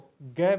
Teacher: कंठ स्पर्श सघोष और अल्प प्राण